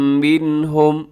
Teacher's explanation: نون ساکن کے بعد ہا حروف حلقی میں سے ہے تو یہاں پہ اظہار کریں گے، غنہ نہیں کریں گے۔ منہم تیزی سے پڑھ دیں گے۔